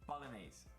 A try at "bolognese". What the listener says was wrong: So the two things that are so wrong with this word is Bolognese. So GN is ñ, and the final E is pronounced E. Ñ.